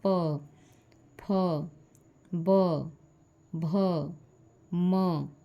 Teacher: दोनों होठ सट जाते हैं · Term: ओष्ठ